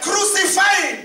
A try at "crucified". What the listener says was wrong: I want to hear the D.